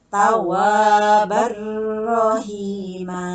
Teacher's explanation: Idgham bila guna artinya memasukkan tidak dengan dengung, tidak ditahan, ya. Lawan katanya ditahan harus cepat, ya, harus sigrah.